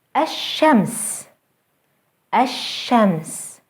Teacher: Notice how the sun letter is doubled and how the L sound is lost. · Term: sun letters